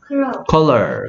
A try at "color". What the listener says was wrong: 일단 어 소리가 붙어야 돼서 어 소리가 오가 된 거예요. 커. 그 다음에 어이 아니고 컬러다. 컬러.